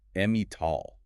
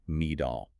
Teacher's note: the tongue gets lazy, it flaps, and the sound becomes a D, me-doll. But look at the word hotel. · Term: flappy T